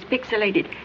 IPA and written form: ˈpɪksɪleɪtɪd (pixilated)